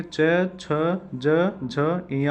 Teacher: इनका उच्चारण तालु से किया जाता है, इन्हें इसलिए तालव्य कहते हैं। तालु मतलब मुंह के भीतर छत का पिछला भाग, मतलब ताल के पीछे वाले भाग से हम इसका उच्चारण करते हैं।